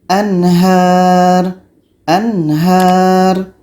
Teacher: Nun mati jelas, ha jelas dan tidak ada dengung.